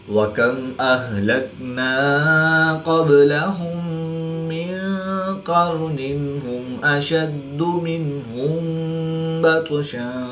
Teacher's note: نون ساکن کے بعد قاف حروف اخفا میں سے ہے تو یہاں پر اخفا ہوگا یعنی غنہ زمانی کر کے پڑھیں گے. قاف حروف مستعلیہ میں سے ہے تو اس کو پر یعنی موٹا پڑھیں گے. · میم ساکن کے بعد حرف با اور میم کے علاوہ حرف حمزہ ہے تو یہاں پر اظہار شفوی ہوگا, غنہ نہیں کریں گے. قاف حروف مستعلیہ میں سے ہے تو اس کو پوری یعنی موٹا پڑھیں گے. · میم ساکن کے بعد دوسری میم ہے تو یہاں پر ادغام شفوی ہوگا یعنی غنہ کر کے پڑھیں گے